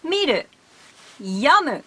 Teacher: Every kifuku verb has its own accent peak on the second hiragana from the last one.